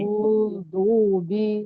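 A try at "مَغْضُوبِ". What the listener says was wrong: नहीं, इतना इतना लंबा नहीं, मगदूबी।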